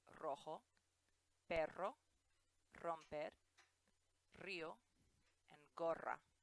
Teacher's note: it's always the rolled R such as Rojo